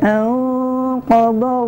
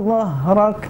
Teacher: dha yang pertama dari sisi lisan bertemu dengan gigi geram atas. Dha yang kedua dari ujung lisan bertemu dengan ujung gigi seri bagian atas.